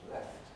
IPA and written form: left (left)